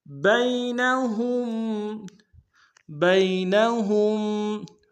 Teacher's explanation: بین میں با کو یا کے سامنے لائیں گے، یا لین بغیر کھینچے پڑھیں گے